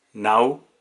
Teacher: ¿Y dónde está el acento? En nau, en la vocal abierta de la antepenúltima sílaba. Por lo tanto, es esdrújula.